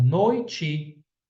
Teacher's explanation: Com certeza, eu tenho um ditongo, noite, e um ditongo decrescente, ó. No, i, o som está descendo e fica fraco.